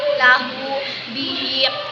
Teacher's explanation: Masilah qasirah apabila ada hak domir yang berharokat kasrah atau domah. Cara membacanya dipanjangkan 2 harokat.